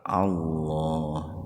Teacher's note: Lafdul jalalah atau lebih spesifiknya huruf lam didahului fathah, maka dibaca tebal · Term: tabhim